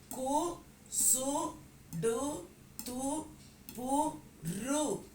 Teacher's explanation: அது தனக்குரிய மாத்திரையில் குறைந்து ஒலிக்கும் போது அது மெய்யெழுத்துப் போல காட்சி தருகிறது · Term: குற்றியல் உகரமாக